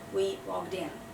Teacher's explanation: We put the stress on the in, and it's basically like one word.